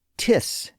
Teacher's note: they contracted the phrase by dropping the initial I in the pronoun it rather than the initial I in the verb is like we do today.